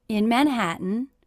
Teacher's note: Again, my voice went up at the end.